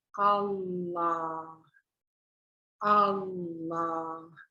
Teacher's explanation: And then we have the l, the roof of the tongue on your, the tongue, I mean, the middle part of the tongue on the roof of the mouth is the l sound